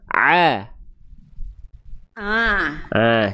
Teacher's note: Jadi ain Bunda sudah bagus cuman masih masuk hidung.